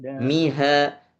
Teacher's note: Ha itu ha di dada. Miha. Miha jangan ditenggorokan.